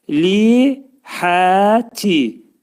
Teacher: Təşdidlidir. Li, həti, hə hərfi iki səs qədər uzanacaq. Və təvəssav bu şəkildə oxunacaq.